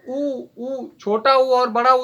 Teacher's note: जो होता ऊ अगर बोलो तो ओठ हमारे क्या होते हैं, गोल होते हैं। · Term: व्रतमुखी